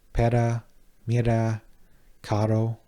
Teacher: The flap R, which sounds similar to the double T or D sounds in English like ladder or butter